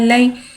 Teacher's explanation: या साकिन है, या साकिन से पहले ज़बर आ रहा है, यालिन हो रहा है, लिहाजा यालिन को बगैर खींचे बगैर झटकाते नरमी से मारूफ पढ़ेंगे